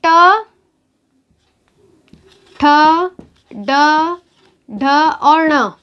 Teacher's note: ट ठ ड ढ और ण। इन वर्णों का उच्चारण स्थान होगा मूर्धा।